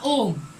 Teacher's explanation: ऐसे स्वर वर्ण जिनके उच्चारण में ह्रस्व स्वर से 3 गुना समय लगता है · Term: प्लुत स्वर